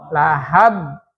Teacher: Kemudian ba keduanya dikeluarin kolkolannya, sifat kolkolanya.